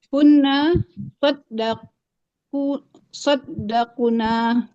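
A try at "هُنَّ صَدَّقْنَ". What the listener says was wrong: Pendek nanya Bu. Pendek.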